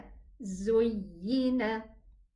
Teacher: the y is pronounced from the middle part of the tongue